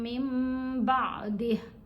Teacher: یہاں ہم نے نون کی آواز کو میم کی آواز میں بدل دینا ہے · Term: اقلاب